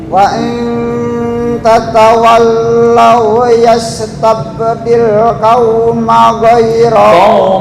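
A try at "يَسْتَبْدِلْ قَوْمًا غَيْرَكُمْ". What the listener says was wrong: Qauman ghairakum, bukan qauma tapi qauman.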